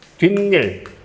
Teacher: 뒤하고 일 사이에서 니은 두 개 첨가되는 거죠. 니은 소리가 덧난다.